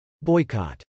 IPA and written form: bˈɔɪk.ɑt (boycott)